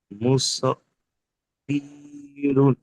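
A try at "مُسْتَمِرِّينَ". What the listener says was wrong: তো নয়, তা মুস্তা, মুস্তা। মিম সিন পে মুস্তা যাবে, তা মুস্তামিরিন।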